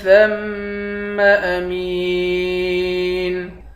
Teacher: ثا کو میم کے ساتھ ملا کر میم پر غنہ کریں گے۔ میم کو یا کے ساتھ ملا کر یا کو ایک الف کے مقدار کھینچ کر پڑھیں گے، آخر میں نون ساکن ہے۔